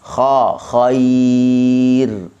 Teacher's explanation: ra dibaca dengan nipis kerana didahului oleh huruf ya.